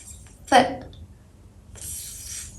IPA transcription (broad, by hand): θ